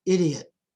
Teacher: a full vowel followed by a reduced vowel and a reduced vowel as in the word idiot